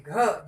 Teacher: घ ज्यादा प्राण वायु है, हमें ज्यादा जोर लगा करके बोलना पड़ता है